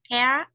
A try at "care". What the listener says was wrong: Em đọc khá đúng rồi, nhưng mà cái từ care em lại bị thiếu âm ơ. Em đọc là care.